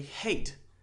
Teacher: So you make the A sound, it's very long. Now, it's true for this word, but hate is one syllable.